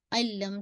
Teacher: Sound of the तनवीन completely मर्ज हो गई लाम के अंदर ना, नॉट अनलम, अल्लम, ठीक है। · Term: कंप्लीट मर्जिंग